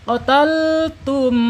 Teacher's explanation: Ketika ada mim sukun ketemu dengan huruf nun, ini bacanya idhar syafawi. Idhar syafawi. Jadi mimnya harus jelas dibaca. Qataltum, tahan 2 harokat.